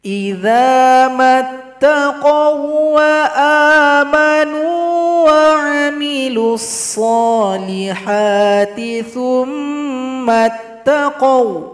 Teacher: Ketika waqaf itu sifat lin, baca pendek. Ketika lanjut sifat lin plus idgham mutamatsilin tanpa dengung.